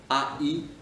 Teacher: Deux sons dans la même lettre, c'est une diphtongue.